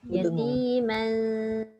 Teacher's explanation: Asalnya man, tapi sebab dia bertemu zal tu huruf ikhfa, maka dia jadilah ikhfa, maknanya dibaca dengan dengung.